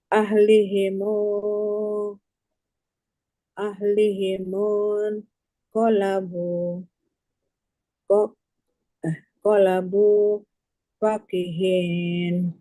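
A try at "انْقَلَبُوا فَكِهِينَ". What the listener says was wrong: Iya Bunda, pas. Alhamdulillah.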